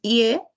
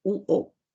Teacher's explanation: dependiendo de cómo la lengua se va desplazando tenemos vocales anteriores que son la i y la e